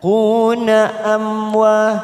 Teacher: mim sukun bertemu waw idhar safawi kita baca jelas tanpa mendengung. Amwa fathah diikuti alif 2 harokat kita panjangkan.